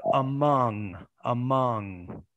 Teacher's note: you have the schwa because it's unstressed then you have the m then you have the wedge which is the stress the stress schwa then you have the